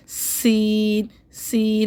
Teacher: जुबान मुंह के अंदर रहेगी और सीटी निकलेगी